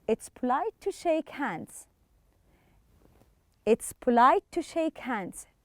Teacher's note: notice how to is reduced and pronounced quickly when you read it in the sentence